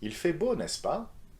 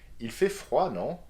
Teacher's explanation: You can either use n'est-ce pas or non at the end of a question with rising intonation